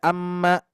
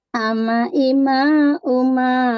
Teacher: Jangan sedikit ada amma, tapi ama ima uma, dikarenakan ini gunanya tidak sempurna Bu. Ama ima uma, ringan.